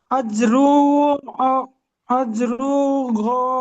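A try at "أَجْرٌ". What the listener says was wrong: আজরুন, আজরুন দুপেশ আছে তো, আজরুন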